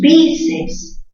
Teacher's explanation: bíceps, mayor fuerza en bi